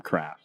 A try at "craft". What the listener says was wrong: I like the term, but it sounds like you say carafe. Carafe.